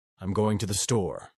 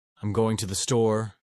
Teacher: Californians often raise their tone at the end of sentences, making everything sound like a question. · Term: uptalk